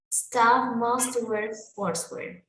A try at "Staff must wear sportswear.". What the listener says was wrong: so yeah, focus a little bit on the T. Se escucha un poquito más esa T, T.